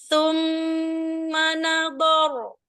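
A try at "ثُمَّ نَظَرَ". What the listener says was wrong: perbaiki di huruf sa ya bukan ta bukan t bukan tuma su ujung lidahnya dikeluarkan sedikit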